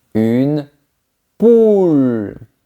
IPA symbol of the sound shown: u